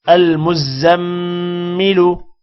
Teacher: میم پر غنہ کریں گے اور کسی بھی حرف کو کھینچ کر نہیں پڑھیں گے